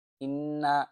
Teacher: ইন্না গুন্না হবে। নুনের উপর তাসদিদ হলে গুন্না করা ওয়াজিব।